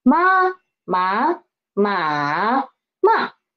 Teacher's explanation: First is flat and second is rising up and the third is drop down and rise up again and the fourth is drop down. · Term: four tones